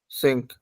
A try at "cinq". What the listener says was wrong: It's not sink, it's sunk, sunk, sunk, sunk, sunk.